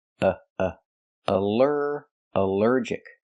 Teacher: the al is not pronounced all but pronounced uh like in cup and up because it's not stressed